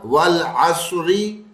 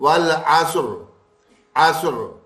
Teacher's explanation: زیر آ رہا ہے، زیر کی ہوگی تو ساکن سے بدلے گا. تو ہم والعصری یوں نہیں پڑھیں گے، بلکہ وقف کرتے وقت والعصر عصر.